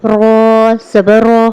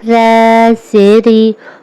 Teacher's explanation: رو جو ہے موٹا پڑھا جائے گا، ری باریک پڑھا جائے گا، ٹھیک ہے، کیونکہ رو کے اوپر زبر ہے تو وہ پور، اور را کے نیچے زیر ہے، اسے باریک پڑھیں گے۔